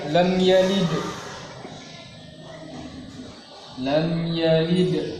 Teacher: Mim sukun bertemu dengan ya, maka izhar syafawi. Berhenti seperti ini lam dengan tujuan mempelajari hukum yang ada dinamakan waqaf ikhtibari.